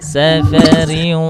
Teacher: sa s biasa bukan sya ya tapi sin biasa